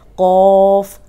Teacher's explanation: صرف اس میں یہ ہے کہ موٹا پڑھنا ہے لیکن ہونٹ گول نہیں کرنے